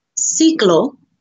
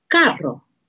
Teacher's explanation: a soft sound, which is the front of the mouth sound that will make an S sound, S, okay, as in ciclo, or it has a hard sound, K, which is a back of the mouth sound, as in carro, okay?